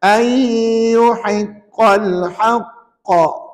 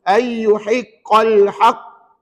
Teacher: bila berhenti, bacaannya mesti ada qalqalah akbar